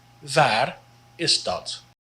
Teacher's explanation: And remember to roll the R if you can, just a little bit.